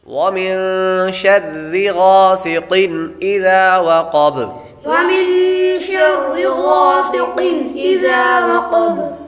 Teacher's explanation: غاسق قاف حروف مستعلیہ میں سے ہے اس لیے اس کو پر پڑھیں گے